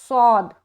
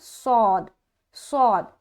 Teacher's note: अब मोटा भी है और फा से मिल रहा है, और इसमें एक देखेंगे जब इसको हम अदा करते तो एक सीटी नुमा आवाज आती है